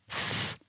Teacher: The word begins with the unvoiced th sound, so you need to pop your tongue out for that.